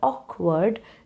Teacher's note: try to put stress on the first syllable of the word